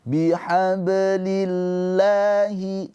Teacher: lafadz Allah di sini dibaca dengan tarkik tipis pakai a karena didahului dengan kasroh